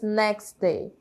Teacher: na hora que a gente fala some o som do T acontece essa Elisão e a gente fala apenas next Day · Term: elisões de t e d